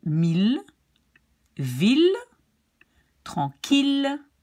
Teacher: Even though you have two L's, you don't say Y but L.